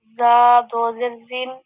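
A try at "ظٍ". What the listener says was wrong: اچھا یہ زا نہیں ہے، غو، غو یہ حروف مستعلیہ میں سے ہے، تو ہم نے اس کو لمبا نہیں کرنا، نرمی کے ساتھ اس کو پڑھنا ہے اور ساتھ میں اس کو پر کر کے بھی پڑھنا ہے،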